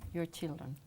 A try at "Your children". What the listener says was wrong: No. Louder. Your children. Your children. Your children. No. No alargues your. Your children.